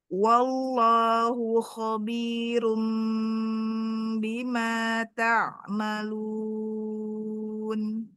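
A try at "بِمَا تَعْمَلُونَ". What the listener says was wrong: ta'malu. Bukan, tidak naik ya. Ta'malun. Ta'malun. Ta'malun. Iya, ainnya tawasud. Kemudian tipis ya. Bukan, masih tinggi. Iya, intonasinya nggak boleh naik karena udah selesai. kalau mau naik berarti mau melanjutkan lagi ya.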